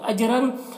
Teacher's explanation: جیم میں قلقلہ ہوگا اور رن کی تنوین میں اظہار ہو رہا ہے